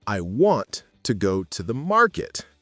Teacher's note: For instance, in the sentence, I want to go to the market, a native speaker naturally stresses want and market, while the little words to andthe are lighter. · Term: stress and rhythm